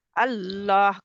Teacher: इसमें जलाला का लाम जो है वह मोटा पढ़ते हैं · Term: लाम जो है वो मोटा